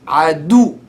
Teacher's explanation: You raise the pitch of the sound at the waw. You say at the letter before the waw. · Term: nabr